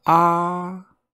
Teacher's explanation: the first tone which is represented by a flat line is a very flat sounding a which is just ah then the second tone which